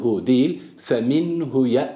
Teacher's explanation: fhu uzatmıyor bu yaygın olan okuyuş larda ki doğru okuyuş olmaz buradaki hu zamirini uzatmak uzatmıyor uzatmadan geçiyoruz